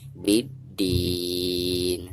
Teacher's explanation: Dari bi langsung ke huruf dal ya. Dari bi langsung ditasydidkan ke huruf dal karena alif lam di sini dihukumi alif lam syamsiah. Ada alif lam di depannya merupakan salah satu huruf syamsiah, di sini dal ya.